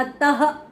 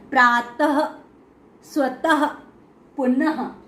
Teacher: इसका उच्चारण जो ह है हा के समान होता है। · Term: विसर्ग